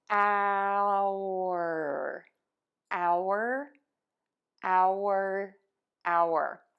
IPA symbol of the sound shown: aʊɚ